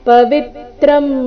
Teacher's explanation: ಪವಿತ್ರಂ ವಿ ಮೇಲೆ ಆಘಾತ